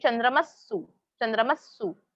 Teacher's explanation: वो जो विसर्ग है स जैसे ही, हाफ स जैसे ही उसको प्रोनाउंस किया जाता है. तो प्रोनाउंसिएशन में डिफरेंस नहीं है, राइटिंग स्टाइल में डिफरेंस है.